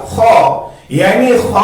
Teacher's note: खा जो है हलक के पहले वाले ऊपर वाले हिस्से से अदा होता है जो मुंह की जानिब है, जिसको हम अदनाए हलक कहते हैं।